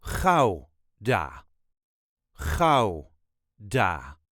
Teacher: There is a very slight emphasis on the first syllable.